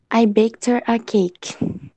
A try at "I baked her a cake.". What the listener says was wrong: Very good. Viu só como rola? Muito bem.